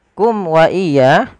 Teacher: Kemudian kum wa iya. Di sini, huruf mim yang senyap bertemu dengan huruf wau, yang kita sebut idhar syafawi, bunyi huruf mim diperjelas